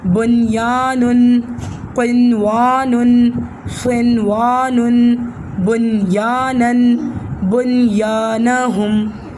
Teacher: 6 الفاظ ایسے ہیں جہاں جزم والے نون ہونے کے باوجود غنہ نہیں کیا جاتا، یعنی نون کو اظہار پڑھا جاتا ہے